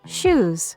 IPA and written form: ʃuz (Shoes)